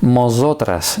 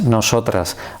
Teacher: la presencia de la bilabial M que procede de N.